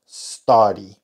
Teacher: esta u no suena como una u sino como una a reducida una a corta lo que llamamos en inglés shua que es básicamente la a